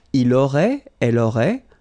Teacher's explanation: final T not pronounced